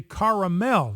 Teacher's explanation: if you live east of the Ohio River you probably say caramel you probably say three syllables and not just two